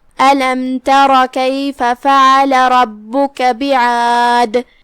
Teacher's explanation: آخری میں جو کہ یہاں حرف الدال ہے، ہم اس پہ روکیں گے تو جزم سے روکیں گے، تو دال کا حکم ہے قلقلہ. یہاں قلقلہ کبرا ہے، تو ہم دال کو ہلاتے ہوئے یہ کلمہ کو ادا کریں گے